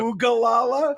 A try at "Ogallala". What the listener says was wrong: There is one O.